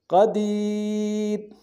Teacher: غنہ کریں گے اور را کو موٹا ادا کریں گے قدیر وقت کے صورت میں را کو باریک ادا کریں